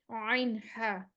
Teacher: عین پھر حروف حلقی آ گیا، وسطی حلق سے نکلے گا. ہا کا بھائی ہے یہ عین ہا، یہ وسطی حلق سے نکلتے ہیں.